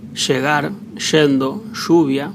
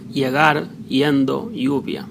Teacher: Y for Spanish from Spain accent and Latin America, and Sh for Uruguay and Argentina accent.